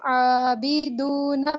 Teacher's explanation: عابدون میں تو کھڑی زبر ہے، اس کو ایک الف کے برابر کھینچ کے پڑھیں گے